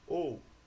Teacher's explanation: o fonema o é uma vogal, enquanto o fonema u vai ser uma semivogal, o som mais fraco